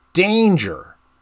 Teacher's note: trochaic substitution where the first syllable in danger is emphasized and the second syllable is less emphasized